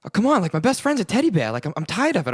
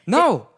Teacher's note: He kind of always has this like breathy thing going on.